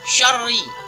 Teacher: ra-nya berharokat kasrah atau baris bawah, yang disebut di dalam hukum tajwid ra tarqiq atau ra tipis, yakni dengan menipiskan bacaan ra, jangan seperti kita membaca ra dengan berharokat fathah atau dhammah.